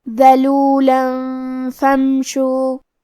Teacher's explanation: کلمت فمشو میں یہاں میم ساکن ہے، لہذا ہمیں میم کو ظاہر کرنا ہے